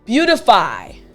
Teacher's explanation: it this time the t sounded like a d that's because when we say this word quickly the t sounds like a d